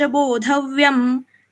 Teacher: क्योंकि 8th letter है, यहाँ पे रुक रहे हम, इसलिए आगे कुछ भी हो यहाँ पे अनुस्वार का उच्चारण म जैसे होगा